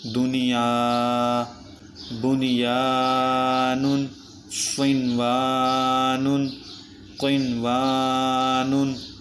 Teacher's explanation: ان چار کلمات میں نون ساکن کے بعد حروف یرملون ایک کلمے میں آنے کی وجہ سے ادغام نہیں بلکہ اظہار مطلق ہوگا۔ ان چاروں کلمات میں غنہ نہیں کریں۔